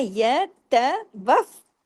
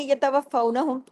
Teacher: تشدید یہ بتا رہی ہے کہ ڈبل فا ہے، تو ہم نے اس کو ڈبل پڑھنا ہے، یہ ت وف، اور پھر فاؤ دونوں دفعہ پڑھنے میں آئے نا.